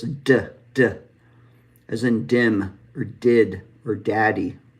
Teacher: So next is D. D is what we call an alveolar stop, and it's voiced. And so again, the alveolar ridge is right behind our front top teeth.